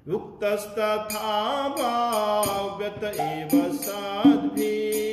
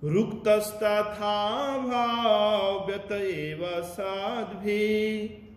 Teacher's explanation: जब विसर्ग का उच्चारण नहीं करेंगे तो आगे वाला शब्द यदि हम संयुक्त करेंगे तो उक्तस की जगह वह रुक्तस हो जाएगा, तो उसमें कोई अशुद्धि नहीं है।